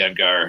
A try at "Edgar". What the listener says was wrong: Edgar. You emphasize the Ed and the Gar.